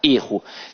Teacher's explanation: o verbo ea pronúncia aberta é ruim e que o substantivo tem a pronúncia fechada